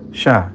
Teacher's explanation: Nah, tafasyi ini juga agak sulit bagi yang masih awal-awal gitu ya. Dikeluarkan dengan menyebarkan angin di atas lidah. Yani bibir ini tidak ikut berperan ya.